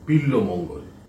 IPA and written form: bilamaŋal (Bilwamangal)